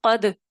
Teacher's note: اگر آپ اس کو الگ پڑھیں گے تو کلکلے کے ساتھ پڑھیں گے